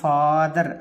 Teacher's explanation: అప్పుడు ఈ పదంలో దీర్ఘం ఎక్కడొచ్చింది, ఫా ఇక్కడ ఉంది, అంటే స్ట్రెస్ ఇక్కడే ఉన్నట్టు.